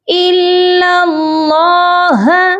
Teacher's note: لام مشدد کو اللہ کے لام مشدد کے ساتھ ملا کر پڑھیں گے۔ درمیان میں 2 خالی الف ہیں، ان کو چھوڑ دیں گے۔